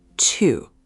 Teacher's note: It's a falling fourth tone.